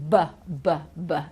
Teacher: you can hear the vocal chords vibrating